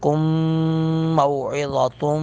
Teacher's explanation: کم میم ساکن کے بعد میم مشدد ہے، ادغام باغنہ کر کے پڑھیں گے ، اس لیے یہاں پہ غنہ کریں گے، کم موعظۃم، تن